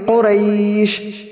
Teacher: آخر کے اندر شین ہے، شین کو بھی صحیح سے ادا کریں گے۔ حروف تفشی میں سے یہ منہ کے اندر پورے آواز کی پھیل جاتی ہے